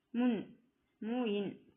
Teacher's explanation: நாவின் நுனி மேல்வாய் அன்னத்தின் முன்பகுதியை தொடுவதால் நகரம் பிறக்கிறது